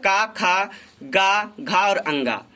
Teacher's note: कु, चू, टू, तू, पू, जिसे कु का मतलब का वर्ग, इसमें 5 अक्षर का, खा, गा, घा और अंगा, इसका उच्चारण स्थान कंठ